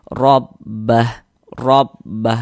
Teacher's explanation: Maka ini huruf ro memiliki harakat fathah. Maka dia dibaca tabkhim. Dibaca tebal. Tebalkan huruf rnya